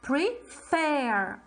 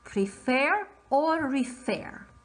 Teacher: the second syllable is stressed the last syllable is stressed